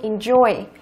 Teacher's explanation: Câu thứ 7, động từ có hai âm tiết. Đó, trọng âm rơi vào âm thứ hai, enjoy